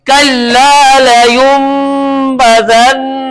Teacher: ٹھیک ہے، تو اب یہاں پر غنہ بھی کریں گے اور نون کو میم سے بھی بدلیں گے. اور یہاں پر غنہ اس لیے کر رہے ہیں کیونکہ نون مشدد ہے